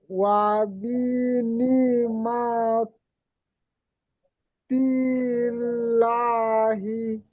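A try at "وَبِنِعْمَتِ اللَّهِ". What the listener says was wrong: জি মাশাআল্লাহ, তিল্লাহি। জি লামটা টান দেবেন, যেহেতু লামের উপরে খাড়া জবর আছে, বুঝতে পারলেন?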